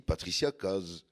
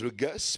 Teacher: l'accent qui remplace les Z par des S, et réciproquement